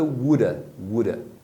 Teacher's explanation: Muitas vezes esse som do of, você só vai ouvir as pessoas falando sem o som do V.